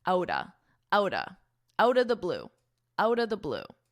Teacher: we really combine these two words to sound like outa